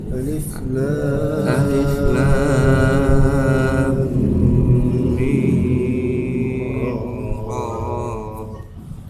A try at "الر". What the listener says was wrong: Ra ini jangan terlalu panjang ya, terlalu 2 rakaat saja itu. Alif Lam Mim Ra.